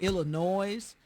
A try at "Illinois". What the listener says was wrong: That S is silent, baby.